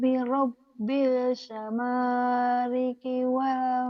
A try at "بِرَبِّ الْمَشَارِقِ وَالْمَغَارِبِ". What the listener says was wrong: Tertukar, tertukar, tertukar. Fala uqsimu birabbil maknya ketinggalan tadi. Birabbil masyariqi wal magharib. Ayo Kak, ketinggalan tadi.